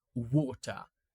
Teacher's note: It's not really like an ah in American. It's more like of an o sound.